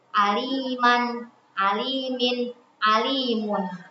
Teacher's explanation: Jadi secara pengucapan itu kita seolah-olah sedang membaca huruf nun, tapi secara tulisan dia tidak ada nunnya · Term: tanwin